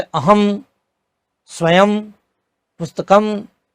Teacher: जब शब्द के अंत में अनुस्वार आता है तो वह अनुस्वार का उच्चारण म, हलंत म ही होता है